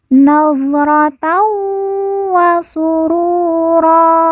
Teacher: Tan bertemu dengan huruf wawu, maka tanwin dileburkan, langsung masuk huruf wawu, kemudian ditekan, ditahan 2 harokat dan didengungkan.